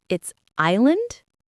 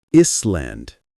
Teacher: You don't say the S. It's island.